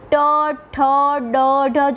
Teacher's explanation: પેઢાની ઉપરનો જે કઠણ ભાગ છે જેને કમાણ કહેવામાં આવે છે તે ભાગને સ્પર્શે છે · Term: મૂર્ધન્ય વ્યંજનો